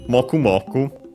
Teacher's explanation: Okay, accent on the first syllable, as often those are.